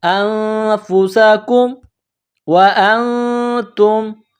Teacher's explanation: نون ساکن کے بعد فا ہے، حروف اخفا ہے تو آواز ناک میں چھپائیں گے۔ انفسکم، سین کو باریک کرنا ہے، کاف کو میم کے ساتھ ملانا ہے۔